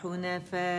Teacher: مد متصل واجب ہے, وقف ہوتا ہے تو پھر 6 کاؤنٹس ہو جاتی ہے, اور حمزہ کو ساکن کریں گے.